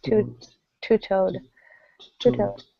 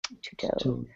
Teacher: It doesn't come out with a t with air so much. It's almost a little closer to a D, not quite, but two-toed.